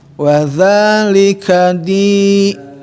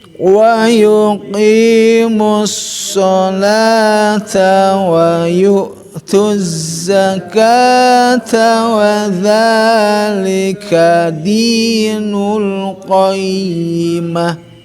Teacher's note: di-nya adalah kasroh berhadapan sama iya yang bersukun panjang ya, berikan ketukan dua